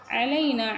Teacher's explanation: வலா தஹ்மில் அலைனா நூனுக்கு மேலே பாருங்கள் மத்து முன்ஃபசில் இருக்குது 4 கவுண்ட் நீட்டணும். அலைனா ஐன் வந்து கொஞ்சம் கரெக்டாக தொண்டையில் கரெக்டாக சொல்லணும். அதே மாதிரி லாம் ஃபத்ஹா யா சுக்கூன் இந்த இடத்துல வந்து லீன் யா லீன் குயிக்காக சொல்லணும். · லாம் ஃபத்ஹா யா சுக்கூன் இந்த இடத்துல வந்து லீன் யா லீன் குயிக்காக சொல்லணும். சாஃப்ட் அண்ட் குயிக்காக சொல்லணும்.